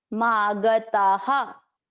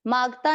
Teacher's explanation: ये विसर्ग है तो विसर्ग को किस तरह से उच्चारण करना है, इसके पिछले वाले अक्षर की मात्रा। अक्षर की मात्रा क्या है, आ, इसलिए विसर्ग को पढ़ा हा।